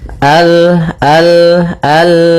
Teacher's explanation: Maka kita baca dengan al kemudian al, hati-hati dalam lafal lam, sempurnakan makhraj daripada lam, ujung lidah naik apa melekat dengan langit-langit atas